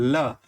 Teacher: इसीलिए इसको ल को पार्श्विक वर्ण कहा जाता है। आप ल का उच्चारण करके देखिए, ल, तो जीह्वा के दोनों ओर से हवा जो है वो बाहर की ओर निकलेगी। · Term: पार्श्विक व्यंजन